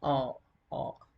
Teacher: This sound occurs on the back part of the tongue, so it is called back vowel.